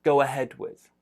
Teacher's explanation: so there's a w sound in the middle there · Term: linking